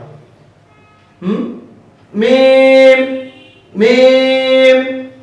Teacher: দুই ঠোঁটের শুকনো অংশ থেকে মিম হরফটি উচ্চারিত হয়, মিম মিম। মিম হরফটি পড়ার সময় আওয়াজ মিডিয়াম হবে, চিকন হবে, নিচের দিকে দাবিত হবে, বাতাস বন্ধ।